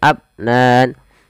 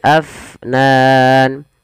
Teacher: alirkan nafasnya jangan abnan tapi Afnan